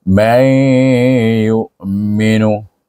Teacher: Bila huruf ya ini ataupun huruf waw, maka dibaca dengan idgham ma'al gunnah juga dengan dengung, tetapi dengungnya pada ya. Dia walaupun nun tu dihazafkan zatnya, dia masih berdengung, iaitu may yu'minu.